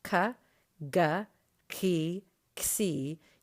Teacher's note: c and if you try saying those sounds c g k you can feel that your tongue is pushed up against the back of your pallet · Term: palatals